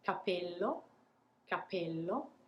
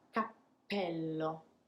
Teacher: what we do is technically taking a little pause before we pronounce the p · i'm pausing before the explosion happens and that is the hint to the italian ears that there is a double p